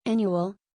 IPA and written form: ˈæn.ju.əl (Annual)